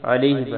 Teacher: عین گلے کے درمیان سے